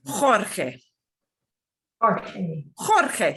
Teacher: the GE's GI will get the throaty H sound, but at least, at least an H sound if you can't do the throaty part of it.